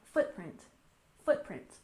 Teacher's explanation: footprint we also stress the first syllable